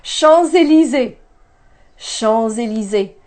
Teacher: have a liaison a bridge between that s at the end of the first word and the e that starts the second word I'm going to link them and pronounce this like a Z